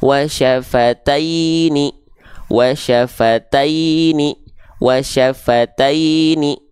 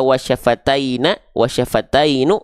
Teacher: dia berharakat kasrah maka dia mesti dibaca dengan vokal I maka huruf nunnya di sini enggak kita baca Na Enggak kita baca NU tapi mesti kita baca dengan vokal I menjadi ni